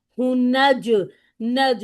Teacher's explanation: हा की दम्मा को राउंडिंग करते हुए डायरेक्टली हम नून से मिलाएंगे नून को दो बार अदा करना है इसलिए जल्दी से अदा नहीं करना हु नज नज जीम पर कलकला कर लें।